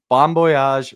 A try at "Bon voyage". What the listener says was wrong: Voyage. Voyage. pronouncing the V as a B? Voyage. Bon voyage.